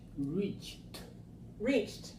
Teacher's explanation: ED sounds like T, voiceless. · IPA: /t/